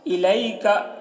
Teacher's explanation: الیکا، یہاں پر دیکھیے یا لین ہے، یا ساکن کے سے پہلے زبر ہے، یا لین ہے. یا لین کو نرم آواز کے ساتھ جلد پڑھتے ہیں اور معروف پڑھتے ہیں.